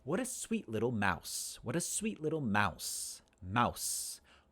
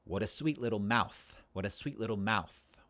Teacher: have the f and the s is a voiceless dental fricative s is a voiceless alveolar fricative